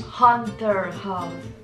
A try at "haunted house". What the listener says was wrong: No, not like a hunt.